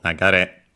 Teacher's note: it's accented on the last syllable